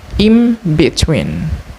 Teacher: However, in rapid speech, the pronunciation might become in between, where consonant N become M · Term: assimilation